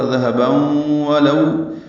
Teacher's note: تنوین کے بعد واو آنے کی وجہ سے ادغام ناقص ہوا ، ذہباً ولو، یہ لو حمزہ لو میں واو لین ہے